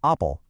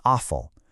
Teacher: those hard stops shifted into softer fricatives and affricates